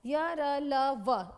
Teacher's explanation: अंतस्थ व्यंजन के उच्चारण में जीवा मतलब जीभ मुख से किसी न किसी भाग को पूर्ण से स्पर्श नहीं करती, उसको कहा जाता है अंतस्थ, जिसमें पूरा टच नहीं होता।